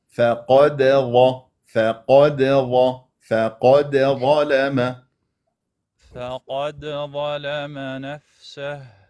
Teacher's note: القاف حرف مفخم درجه ثانيه لانه مفتوح نعم والظاء كذلك هم درجه ثانيه وحرف مفخم لانه مفتوح يعني